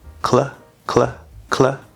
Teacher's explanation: You're going to start in the K, which is the back of the tongue, and you're going to immediately, as soon as you release that, you're either going to bring this up or you can possibly already have it up to where both are touching at the same time.